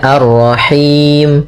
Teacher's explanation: Nah, sukun ini kita namakan dengan sukun arid disebabkan karena wakaf dan sebelum huruf sukun ada huruf mad maka di sini kan ada dua sukun maka panjangkan dulu huruf ya-nya, nah di sini boleh kita panjang panjangkan hi-nya karena bertemu dengan huruf mad boleh dua, boleh empat, boleh enam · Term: mad arid lis sukun